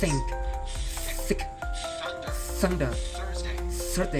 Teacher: You must stretch out the TH sound and hear the air friction.